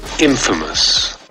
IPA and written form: ˈinfəməs (INFAMOUS)